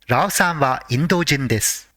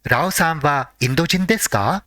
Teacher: the question ends with a rising intonation